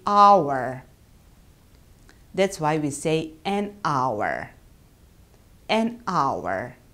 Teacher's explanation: It starts with a H. But we do not pronounce this H.